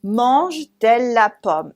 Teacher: a vowel and a vowel at the end of mange, and the beginning of elle, mange-elle becomes mange-t-elle. We add a T in the middle.